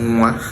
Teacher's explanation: the N there functions as a syllabic nasal, and so you have to accord it the respect that you accord a vowel sound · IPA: [ŋwa]